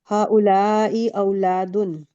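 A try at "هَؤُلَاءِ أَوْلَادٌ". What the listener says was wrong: बिल्कुल।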